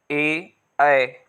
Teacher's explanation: कंठ से आवाज आ रही है और तालु से टच है